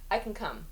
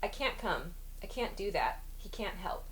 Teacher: it's like the a sound disappears